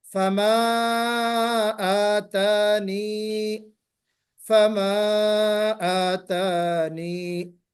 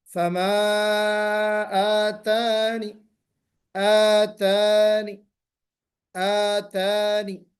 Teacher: یا ساکنہ کو حذف کر دیا جائے گا اور نون پر سکون کرتے ہوئے، روم کرتے ہوئے پڑھیں گے. جی روم کرتے ہوئے.